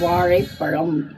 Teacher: அதற்கு நான் நன்றாக மடிந்து மேல்வாய் எண்ணத்தை நன்றாக வருடி தடவி கொண்டு வரும்போது ழா பிறக்கும். நாக்க நல்லா உள்ள மடித்து மேலெண்ணத்திலிருந்து தடவிக்கிட்டு வரும்போது ழா பிறக்கும் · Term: ழகரம்